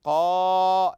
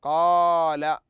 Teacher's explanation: لاحظ الحرف الممدود هنا ما هو حرف القا لم نقل قل بل قلنا قال مد بالالف